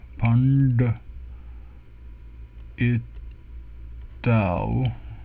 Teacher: we have the retroflex N and the retroflex D